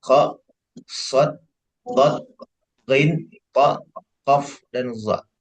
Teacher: 7 huruf hijaiyah yang diucapkan dengan mengangkat pangkal lidah ke langit-langit, yang menghasilkan suara tebal atau tafkhim. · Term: huruf isti'la